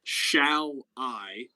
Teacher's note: shall is unstressed whereas i is a stressed syllable